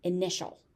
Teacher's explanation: So we've got a TI that's becoming a sh sound here.